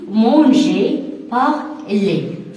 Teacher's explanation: Bon, par exemple, on a le verbe, les verbes que vous utilisez toujours, par exemple, manger, manger, parler, et tous les verbes qui se terminent par ER, c'est-à-dire les verbes du premier groupe. Donc, ces verbes, la lettre R ne se prononce pas.